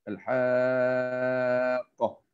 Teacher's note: mad lazim mestilah dibaca dengan 6 harakat